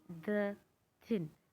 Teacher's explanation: ये दो जो टीथ होते हैं हमारे, अपर एंड लोअर टीथ होते हैं, उनके बीच में एक साउंड प्रोड्यूस हो जाती है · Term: इंटरडेंटल